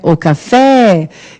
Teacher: Qual é a sílaba tônica de café? É o fé.